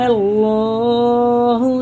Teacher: اللہ کا لام زبر سے ہے تو پر پڑھا جائے گا، یعنی منہ بھر کے موٹا کر کے